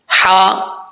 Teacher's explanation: یہ ہا جو ہے وہ باریک ہے، اس کا تعلق اس حلق کی طرف ہے جو حلق منہ کی طرف ہے، اس لیے اس کو باریک پڑھا جاتا ہے۔